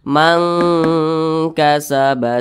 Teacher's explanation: huruf ikhfa Hakiki Dan Dia tergolong kepada ikhfa Hakiki abadah jadi cara membacanya itu disamarkan dan juga didengungkan akan tetapi bunyi dengungnya dia lebih tinggi Nah maka ee bunyi engnya itu dia lebih kental jadi dibacaah